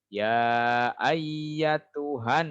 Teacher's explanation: Tahan dulu di nunnya. Gunnah nun.